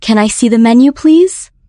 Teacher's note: the stress falls on see, menu, and please.